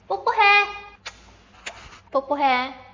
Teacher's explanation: Close your lips firmly and release the sound quickly. Do not release a puff of air.